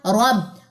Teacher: را کو موٹا کیجئے اور با کے ساتھ ملائیے